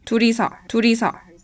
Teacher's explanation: It takes on a different sound depending on its position within the word. So when it's followed by a vowel, it has the flap sound like a Japanese R.